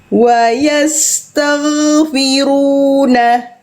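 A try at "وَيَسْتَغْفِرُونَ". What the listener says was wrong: Udah bagus, ngalirnya udah bagus, gak mantul, keren. Tinggal tebalkan. enggak, tapi wayastaghfiruna. Jangan kasih senyum Bunda karena nuansanya jadi kayak vibesnya kayak tipis. Jangan ikut senyum nyata. Tapi agak tutup.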